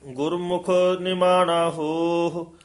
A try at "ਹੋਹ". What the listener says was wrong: ਹਾਂਜੀ, ਇਹ ਹੋਹ ਉਚਾਰਨ ਕਰਨਾ, ਹੋ ਹੋ ਨਹੀਂ ਬੋਲਣਾ। ਆਹੀ ਦੇ ਹੂੜੇ ਨੂੰ ਵਧਾ ਦੇਣਾ, ਹੋਹ।